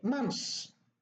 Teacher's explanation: the tha is deleted